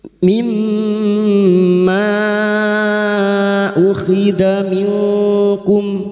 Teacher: Mimma ukhidha minkum, nun sukun bertemu kaf ikfa hakiki. Nun sukun dibaca samar dan mendengung selama 3 harokat. · Mad jaiz munfasil kita samakan dengan sebelumnya 5 harokat kita panjangkan.